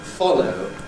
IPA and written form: ˈfɒləʊ (follow)